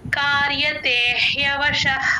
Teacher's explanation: కింద ఇంకో అక్షరం ఒత్తుగా వచ్చినప్పుడు సంయుక్తాక్షరం అంటాం ఆ కార్యతేః అని తీసుకోవాలి కార్యతేహ అని తీసుకుంటే కొంచెం గాలి బయటకు వస్తుంది అప్పుడే హ కింద య వత్తు క్లియర్ గా వినిపిస్తుంది కార్యతేహ్య వశః ఆ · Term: విసర్గ